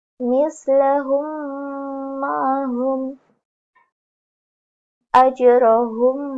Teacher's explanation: ditasjidkan dengan panjang dua harakat dan dengan samar-samar